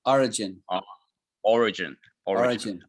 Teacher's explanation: So there's emphasis on the first syllable.